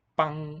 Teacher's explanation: stiff voice quality and a higher pitch on the vowel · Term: tense double b